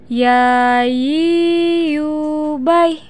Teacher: Huruf ya keluar dari tengah lisan disentuhkan dengan langit-langit. Perhatikan ya, yi, yu, bai.